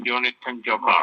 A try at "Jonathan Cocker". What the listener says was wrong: It's Jonathan. It's Jonathan Cocker. There's no J in Cocker. Jonathan Cocker. Cocker.